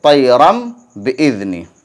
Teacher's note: تو قاعدہ ہو گیا تنوین یا نون ساکن کے بعد با آئے تو تنوین یا نون ساکن کو میم سے بدل کر غنہ اور اخفاء کے ساتھ پڑھیں گے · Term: اقلاب